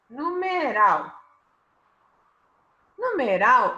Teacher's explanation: Numeral, a última sílaba é tônica. Numeral, a última sílaba é a tônica, é rau. Então, é uma oxítona.